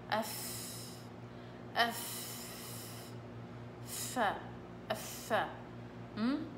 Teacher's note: الفاء لازم يطلع معها هوا كتير